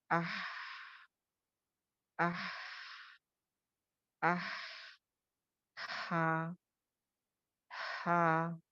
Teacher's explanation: Middle part of the throat से अदा होता है ये हा. लेकिन इसकी सिफ्त क्या है, हम्स है.